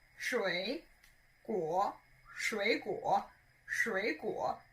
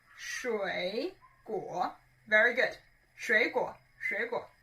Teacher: both of them are third tone, which means your tongue needs to go lower. 水果, it goes lower and a little bit up.